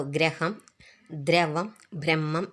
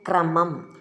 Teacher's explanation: കൂട്ടക്ഷരങ്ങൾ വരുമ്പോൾ ഒരുപോലെയാണ് എഴുതുക. പക്ഷേ പ്രൊനൗൺസ് ചെയ്യുക. അതായത് ഉച്ചരിക്കുന്നത് രണ്ടു തരത്തിലാണ്. ഗജടദബ എന്നീ അഞ്ചു മൃതുക്കളിൽ ചേരുമ്പോൾ ര എന്നും മറ്റുള്ള എല്ലാത്തിനും റ എന്നുമാണ് ഉച്ചരിക്കുന്നത്